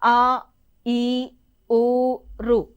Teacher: దీర్ఘములు రెండు మాత్రల కాలంలో పలకబడతాయి